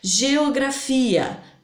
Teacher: Geografia, 2 hiatos, porque as vogais se separaram.